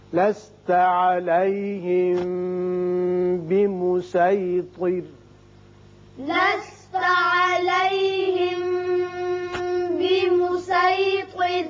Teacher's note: را باریک ہو جائے گا جب ساکن ہو رہا ہے، پیچھے زیر ہے